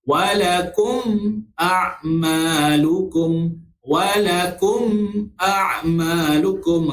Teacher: Okey, huruf hamzah, huruf alif ini salah satu daripada salah satu daripada huruf izhar syafawi. Jadi baca secara terang jelas yang nyata sifat mim yang mati tersebut. Okey, rapatkan bibir, kedua bibir mulut kita